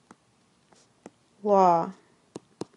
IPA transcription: lɔ